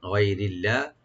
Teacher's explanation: লফজ জালাল এখানে লাইট করে পড়বেন পাতলা করে